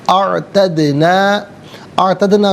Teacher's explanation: اعتدنا میں دال ساکن ہے، حرف قلقلہ ہے، آواز لوٹتی بھی محسوس ہونی چاہیے